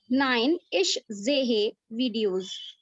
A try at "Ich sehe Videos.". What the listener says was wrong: है पे प्रेशर मत दीजिए, है को लाइट रखिए। इस जे वीडियो।